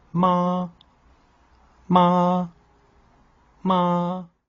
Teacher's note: le premier ton est haut et plat il est perché dans les aigu ce qui permet de le rendre chantant utilisé avec la syllable